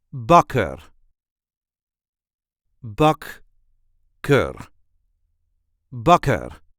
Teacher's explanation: There is a light emphasis on the first syllable.